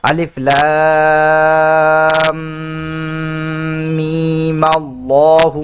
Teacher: वस्ल की हालत में पढ़ना होगा तो हम मिलाएंगे, तो मद नहीं करेंगे, मीम में मद नहीं करेंगे